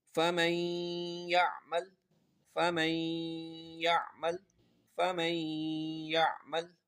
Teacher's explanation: نون ساکن کے بعد یا آ رہا ہے اس لیے یہاں پر غنہ ہوگا، غنہ کر کے پڑھیں گے